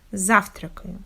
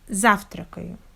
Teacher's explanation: in this verb we have the stress on the first syllable, and all next syllables must be pronounced without a stop, without a stress, and without proper clear pronunciation of vowels.